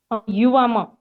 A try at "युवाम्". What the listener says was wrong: युवाम नहीं म आधा